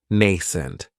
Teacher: the stress is on that first syllable. It has the long A sound, nascent. That second syllable has that schwa, nascent.